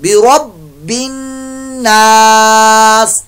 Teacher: नून मुशद्दद का यहाँ गुन्ना, हर जगह पर गुन्ना होगा